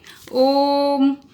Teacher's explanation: प्लुत स्वर कहेंगे जैसे इसके उच्चारण में 3 गुना समय लगता है